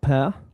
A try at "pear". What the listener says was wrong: I noticed you say the the R pair. Uh, you can do. Yeah. In RP, we generally don't pronounce the R sound much.